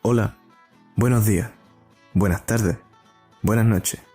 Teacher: He's dropping all of his S's.